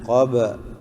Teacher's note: Qaba ba mati kan, ba mati, qalqalah sughra